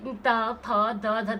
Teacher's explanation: त थ द ध, देखो दांतों से बोला जा रहा, इसको दंत्य कहते हैं